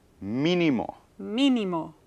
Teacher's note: these are words that have a stress on the third to the last syllable. And these words always need a written accent mark. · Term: esdrújulas